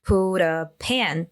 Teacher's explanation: that T before vowel can turn into a flap T, into this duh sound